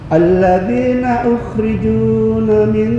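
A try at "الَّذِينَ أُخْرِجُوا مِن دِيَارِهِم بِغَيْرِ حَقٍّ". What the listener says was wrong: Nah, nggak ada na, jangan ditambah na. Ukhriju min.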